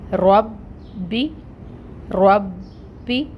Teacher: اور پھر با کے اوپر تشدید ہے، ٹائم ٹیکنگ ہوگا، یعنی کہ یہاں پر 2 با ہیں، ایک با ساکن ہے اور ایک با حرکت والا ہے زیر کے ساتھ، تو ہم نے دونوں با ادا کرنے ہیں۔ جب دونوں با ادا کریں گے تو تھوڑا ٹائم لگے گا، اس وجہ سے ہم تشدید پہ کہتے ہیں کہ ٹائم ٹیکنگ کریں گے۔